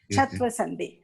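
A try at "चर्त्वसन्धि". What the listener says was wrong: Not Chatva. Chartva. Char. It is Chartva.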